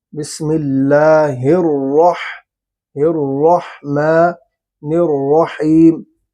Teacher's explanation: را پر زبر ہے تو اس لیے را پر ہو رہا ہے